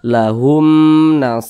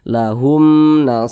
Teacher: huruf ba bukan huruf mim Berarti semua hukumnya namanya izhar syafawi maka dibaca jelas tidak berdengung jadi baca jelas saja lahum jangan dibaca lahum lahum jangan dipanjangkan seperti itu dibaca pendek